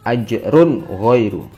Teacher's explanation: Yang ketiga yaitu ada bacaan idhar halqi, yaitu ada tanwin bertemu ghain, dia terbaca idhar atau jelas.